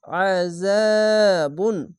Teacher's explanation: লাহুম লাহুম আজাবুন জাবার পাশে খালে আলিফ এক আলিফ টেনে পড়বেন আইনটিকে মোটা করে গলা চিপে পড়বেন